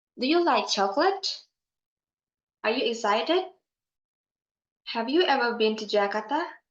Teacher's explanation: in a close question sentence at the end of the sentence tone of voice will rise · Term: Rising ination